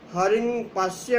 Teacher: अनुस्वार का उच्चारण स्थान नासिका के साथ साथ तालु भी है, क्योंकि यहाँ अनुस्वार का आश्रय स्थल इकार है और इसका उच्चारण स्थान इचु यशानाम तालु है।